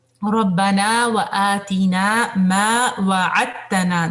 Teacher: دال جو ہے وہ تا کے اندر مرج ہو جائے گا